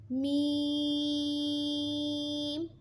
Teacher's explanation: میم دونوں ہونٹوں کے خشک حصے سے ادا ہوگا۔